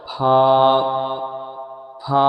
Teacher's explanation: নিচের ঠোঁটের ভিজে অংশ এবং সামনে উপরে দুই দাঁতের আগার সাথে লাগিয়ে উচ্চারিত হয়